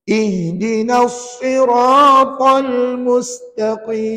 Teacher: lagi nak bunyi Kaf ke nak bunyi Kaf ka Kaf maka pangkal lidah tu tekan hampir ke anak tekak kat dalam